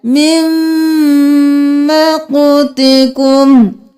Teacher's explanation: यहाँ पर देख लीजिए सूरतुल मुमिन की आयत नंबर 10 में मिम मक़तिकुम, नून को नहीं पढ़ना, मीम को मीम के साथ मिलाना है